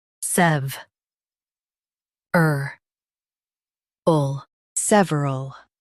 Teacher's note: Stress SEV and keep ul light.